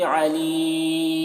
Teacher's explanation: अलीम, अब यहाँ पर देखिए वक्फ़ कर रहे हैं तो मीम की जो दो पेश की तनवीन है वो सुकून से बदल जा रहा है, और यहाँ पर हर्फ मद या है, हर्फ मद के बाद सुकून वक्फ़ की वजह से है तो यहाँ पर मद्द आरिज़ वक्फ़ी होगा। इसमें तूल तवस्सुत कसर तीनों जायज़ होता है, तूल ऊला होता है, फिर तवस्सुत, फिर कसरे का मरतबा होता है।